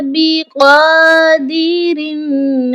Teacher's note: قاف کو بھی ایک الف کے برابر کھینچ کر پڑھا جائے گا اور موٹا پڑھا جائے گا